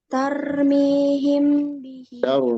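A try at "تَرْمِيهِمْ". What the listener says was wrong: Rohnya jangan kebanyakan, jangan tarmihim.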